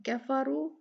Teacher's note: कफारू में भी रा जो है वो उस पे दम्मा है तो ये भारी पड़ी जाएगी